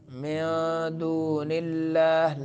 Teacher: लफ्ज़ अल्लाह को बारीक पढ़ना है क्योंकि लफ्ज़ अल्लाह से पहले नून है उसके नीचे कसरा है